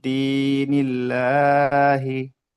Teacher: আহ আহ, ইয়া সাকিনের ডান দিকে জের এসছে, ইয়া হচ্ছে ইয়া সাকিনের ডান দিকে জের এসছে, ইয়া মাদ্দাকে একালি পরিমাণ টান দিয়ে পড়তে হয়